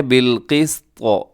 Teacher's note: واولو العلم، آگے قائما بالقسط، یہاں قائمن پہ مد متصل ہے اور یہاں پہ اقلاب بھی ہو رہا ہے کیونکہ تنوین کے بعد با ہے۔ بالقسط، اس میں آخر میں طا ہے، طا کو آپ نے موٹا رکھنا ہے، وقف کرتے ہوئے ساکن ہو جائے گا